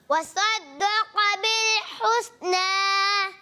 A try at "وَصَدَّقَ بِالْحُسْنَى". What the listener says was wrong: صاد کو پیارے بچے ہم نے صاد کو کیا کرنا ہے، سا کے مخرج سے نہیں ادا کرنا اور موٹا بھی کرنا ہے. وصدق بالحسنى. قاف کو موٹا بھی کرنا ہے، قاف بھی موٹا رہے گا. وصدق